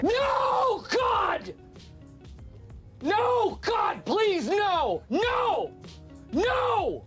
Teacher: a shortened falling tone when used in a sentence oh now the fourth tone which is marked and pronounced as a falling tone · the fourth tone, which is marked and pronounced as a falling tone, can actually be pronounced like you're a bit angry, or like you're giving a threat.